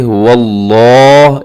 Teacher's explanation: اسے کھینچ کے پڑھنا ہے لفظ اللہ کو، کیونکہ اس کے اوپر کھڑا زبر ہے. اور اس کے علاوہ اس کو اپنے موٹا بھی پڑھنا ہے.